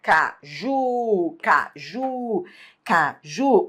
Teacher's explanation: Última sílaba é a tônica. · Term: oxítona